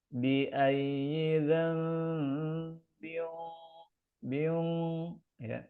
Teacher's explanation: Nah, di sini ada tanwin ketemu qaf ya. Qaf ini huruf tebal, maka ketika dengung masuk ke qaf, ini ada unsur ketebalan ya.